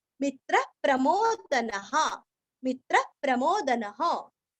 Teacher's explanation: मी के ऊपर आघात